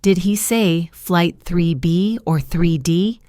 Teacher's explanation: This is a choice question and the intonation is interesting. The voice goes up on the first choice 3B and then goes down on the second choice 3D. Listen. Did he say flight 3B up or 3D down?